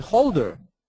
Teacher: Normally, we cancel the H.